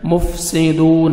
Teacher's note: واو مدہ دال کو 1 سیکنڈ آپ نے کھینچنا ہے